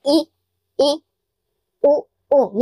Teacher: जब हम इन स्वरों का उच्चारण करते हैं तो हम अपने आप में बोलकर देखो, जैसे ई, उ, यानी मुख है वो बिल्कुल ही कम खुलता है, न के बराबर मुख खुलता है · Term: संवरित स्वर